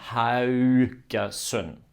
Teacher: The end is just the same, but the AU is a mixture of the A and the U sound. So we start with an A and we go to the U.